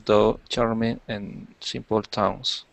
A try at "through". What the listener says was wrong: And the word is through, okay? Through. Instead of though, through. Through.